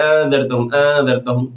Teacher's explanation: حمزہ کو وہ جو پڑھتے ہیں جس وقت تو اس میں تسہیل ہوتی ہے بجائے اس کے کہ اس میں تحقیق ہو، مضبوطی کے ساتھ ہو۔ اَأَنذَرْتَهُمْ وہ پڑھتے ہیں اَنذَرْتَهُمْ، تسہیل کے ساتھ پڑھتے ہیں، یہ ان کی غلطی ہے۔